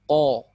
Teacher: bertemunya pangkal lisan bertemu dengan langit-langit yang berdaging. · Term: huruf ko